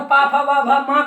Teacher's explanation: तो पू का यानी पाफा वामा, ये ओष्ठ वर्ण है। ओष्ठ वर्ण यानी ओंठों का सहयोग, इनमें ओंठों का जुड़ना, दोनों ओंठों का स्पर्श करना जरूरी है।